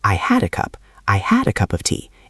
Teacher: Notice how the D at the end of had can sometimes link to the next word.